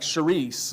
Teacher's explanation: The Greek word used here for the word grace, I can't pronounce it because we don't have the sound in English, but it would be like charis, like cherish, but that CH, it makes that guttural sound that we don't really use much of in English